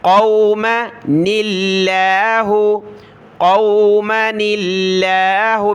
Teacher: لفظ اللہ سے پہلے دیکھیں نون پر زیر ہے، تو یہاں ہم نے لفظ اللہ کو باریک کر کے پڑھنا ہے، پتلا کر کے پڑھنا ہے